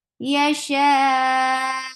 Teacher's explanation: It's just like hiccup. It's just like something has choked your throat because the sound gets abruptly stopped. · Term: nabar